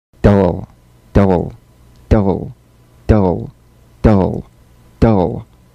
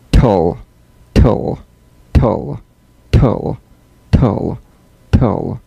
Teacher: DL and TL, cognates, voiced and unvoiced, tongue tip to gum ridge consonants. Bounce the D or T drum beat off the gum ridge and return there immediately for the L.